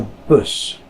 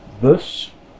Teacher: Hear how the U is a little more rounded? It's not boos, but it's not bus either.